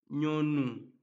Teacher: en voulant prononcer la lettre Ñ, il y a nécessairement l'intervention du nez. C'est pourquoi nous disons que c'est une consonne nasale. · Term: consonnes nasales